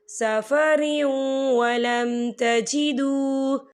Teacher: وَإِن كُنتُم عَلَى سَفَرٍ وَلَمْ تَجِدُوا، سَفَرٍ وَلَمْ تَجِدُوا، یہاں دیکھیں سفریوں، را کے نیچے تنوین ہے اور تنوین کے بعد جو ہے واو آ رہا ہے، اور واو جو ہے حروف یرملون میں سے ہے، تو یہاں پر ادغام ہوگا۔ ہم تھوڑا سا غنّے کے ساتھ پڑھیں گے۔